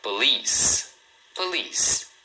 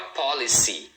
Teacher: Police. Tá vendo? Duas sílabas. Police. E a segunda é a mais forte, tá?